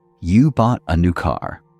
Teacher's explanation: Rising intonation at the end signals a question.